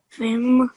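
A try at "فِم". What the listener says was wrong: Good, well done.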